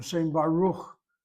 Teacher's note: I'm giving it a K sound. I'm giving it a continuing K sound. I'm not giving it a K that's plosive. Why so? A beged kefat letter following a vowel, a half vowel, any vowel, will never be plosive.